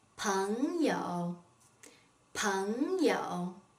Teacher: P-E-N-G has a second tone, Y-O-U has a third tone.